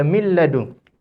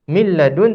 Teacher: tak boleh lafazkan nun. Kita kena terus masuk ke dalam lam.